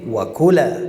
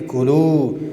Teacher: فشار را سر حرف کاف میاریم